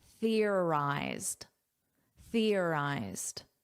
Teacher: So notice an unvoiced th. You put your tongue between your teeth.